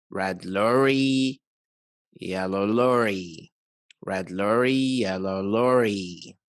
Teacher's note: There's an increase in the stress on nouns and less stress on adjectives